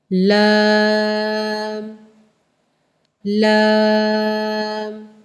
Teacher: لام پڑھتے ہوئے ناک میں آواز نہیں لے کے جانی، لام نہیں کر دینا اس کو۔